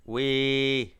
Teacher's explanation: La syllabe est vivante puisqu'elle se termine par une voyelle longue. La consonne initiale est sonore donc basse donc le ton est plat · Cette syllabe commence par la consonne w et se termine par la voyelle longue i